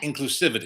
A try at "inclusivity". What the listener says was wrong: Put the wrong emphasis on the wrong syllable. Inclusivity.